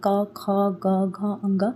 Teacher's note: क, ख, ग, घ, अंग की आवाज़ कहाँ से निकलती है? आपके कंठ से निकलती है।